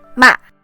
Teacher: The fourth tone starts out high but drops sharply to the bottom. It can sound harsh or scolding, ma.